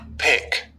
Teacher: अगर अपने मुँह के सामने कोई कागज़ रखेंगे तो उसमें हवा का झटका लगेगा, पीछे हवा से कागज़ पीछे भागेगा।